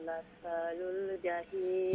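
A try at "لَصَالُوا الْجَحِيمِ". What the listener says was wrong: লাসালুল জাহিম সাদুর পরে আলিফ আছে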